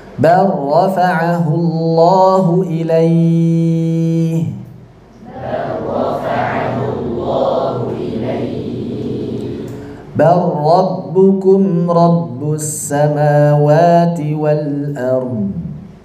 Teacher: Jadi langsung seperti tidak ada lamnya sama sekali. Seperti kita mengucapkan ba ketemu ro tasydid langsung. Benar-benar lamnya di sini tidak tersisa sifatnya sedikit pun, karena idghamnya idgham kamil secara kesempurnaannya.